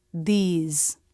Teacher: the tongue tip doesn't have to come through the teeth. It can press behind the teeth. Make sure the tongue isn't at the roof of the mouth or pointing down, but pressing right in the middle, where the teeth come together. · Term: voiced TH